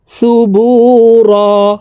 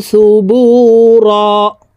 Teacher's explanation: এই র কে এক আলিফ টেনে পড়তে হবে, কারণ ওয়াকফের ক্ষেত্রে হরফের উপরে দুই জবর থাকলে এক জবর সরিয়ে ফেলে বাকি এক জবর রেখে এক আলিফ টানিয়া পড়িতে হয়।